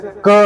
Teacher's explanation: क अगर अपन बोल रहे हैं ना तो उसमें अ की ध्वनि आ रही है